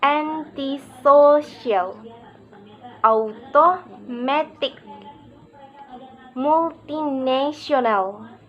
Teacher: there is usually secondary stress on the first syllable, no stress on the second, and primary stress on the third. The remaining syllable one are unstressed.